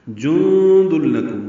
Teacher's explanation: نون ساکن کے بعد دال آنے کی وجہ سے اخفا ہے